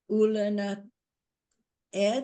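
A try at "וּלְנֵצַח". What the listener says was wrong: Ul. yeah, do the first word again. You're leaving out some vowels. Ul, netz, yeah, it's ul netzach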